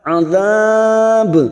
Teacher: Ada mat yang bertemu dengan huruf hidup dan dibaca waqaf, karena kita waqaf di sini maka kita panjangkan 4 harokat. Azab, ujungnya kita pantulkan karena ada huruf ba.